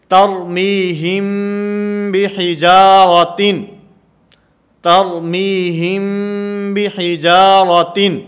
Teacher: میم ساکن کے بعد اگر با آئے گی تو یہاں پر اخفا ہوگا، جیسے ترمیہم بحجارۃ، ترمیہم بحجارۃ، یہاں پر اخفا مال غنہ کا معنی غنہ بھی کریں گے، آواز کو ناک کے اندر بھی لے جائیں گے اور با کو ادا کرتے ہوئے یہ ہونٹوں سے نرمی کے ساتھ ادا کی جائے گی